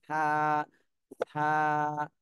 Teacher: জিহ্বার আগা সামনের উপরে দুই দাঁতের আগার সাথে লাগায়ে হালকা ভাবে, হালকা ভাবে নরম করে উচ্চারণ করতে হবে।